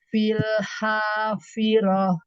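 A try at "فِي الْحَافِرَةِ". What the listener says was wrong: Iya, ya.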